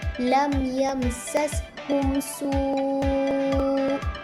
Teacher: mim sukun bertemu dengan huruf sin adalah dibaca dengan jelas tanpa dengung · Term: izhar syafawi